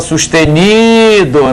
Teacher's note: Então caiu na penúltima sílaba. Sustenido é uma palavra paroxítona.